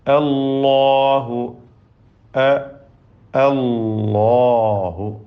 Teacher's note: അതിലെ ലാമും അതിന്റെ ദീർഘാക്ഷരമായ അലിഫും തഫ്ഹീം ചെയ്യേണ്ടതാണ് തടിപ്പിച്ചു പറയണം